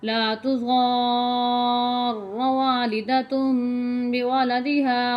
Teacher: لا تضار والدة بولدها، ضار، ضاد الف را مد زبر را پڑھا جائے گا، حمزہ کی آواز نہیں آنی چاہیے۔ ضار، کھینچنا ہے ضاد کو، اس کے بعد را کے ساتھ ملانا ہے آپ نے ضاد کو، پھر پڑھنا ہے